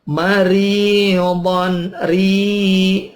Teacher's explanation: don tanwin ketemu hamzah idhar, don jelas